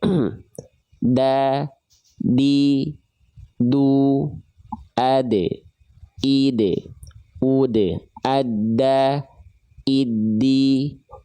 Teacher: Jadi ujung lidah kita nempel ke pangkal gigi sari atas kita. Ya, bukan ke langit-langit tapi ke gusi tempat tumbuhnya gigi sari atas kita. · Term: huruf dal